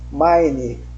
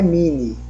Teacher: não se pronuncia mini, pronuncia mine, que é a vogal longa, porque tem aquele Izinho, o E do lado ali no final, né?